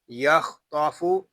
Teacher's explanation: یخطاف، اس میں خا اور طا دونوں پر ہیں کیونکہ یہ دونوں حروف مستعلیہ میں سے ہیں۔